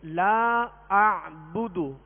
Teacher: پیش کو بغیر کھینچے، بغیر جھٹکا دیے مارو پڑھیں گے، یعنی بدو، یا اس کو دراز نہیں کریں گے بغیر کھینچے.